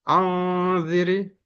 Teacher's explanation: nun sukun bertemu za dibaca dengung, samar. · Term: ikhfa